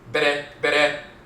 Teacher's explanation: But BR with the rolling R, the tongue tapping the roof of the mouth once is Bere. So if you see BR in the Medutu, the hieroglyphs, Bere, or just, not duplicated, but BR, Bere, and it's reduplicated, Bere.